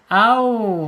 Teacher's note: Wau asyafatain dia tadi bentar ya. Asyafatain ya di dua bibir ya. Tetapi dia tidak tertutup ya